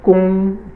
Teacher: gong is the first high tone that's flat or level